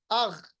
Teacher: غین کی آواز جب ساکن ہو، اس کی آواز کو ہمیں ریباؤنڈ نہیں کرنا، روکنا ہے